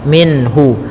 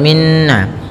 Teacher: ha termasuk huruf-huruf yang kita keluarkan dari al-halq, yaitu tenggorokan kita, maka suara nunnya harus jelas. Minhu, tidak boleh ditahan, tidak boleh minhu, ya tidak boleh minna. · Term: izhar halqi